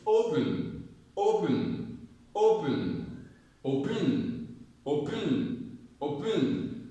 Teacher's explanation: So the stress is on O because we do not say open, open, we say open.